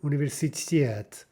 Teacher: the stress is on the ending, on the final syllable